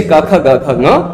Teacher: इन वर्णों का उच्चारण स्थान कंठ है